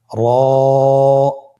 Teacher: জিহ্বার আগার উল্টা পিঠ তার বরাবর উপরে তালের সঙ্গে লাগিয়ে উচ্চারিত হয় · র হরফটি এখানে আমরা পুর করে উচ্চারণ করব। মোটা করে উচ্চারণ করব। এবং র হরফটি এক আলিফ টেনে পড়ব।